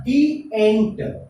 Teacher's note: क्योंकि यह एंट है, एंट का उच्चारण वावेल से हो रहा है और वावेल से हो रहा है तो इसका उच्चारण द नहीं बल्कि हम क्या पढ़ते हैं, डी पढ़ते हैं।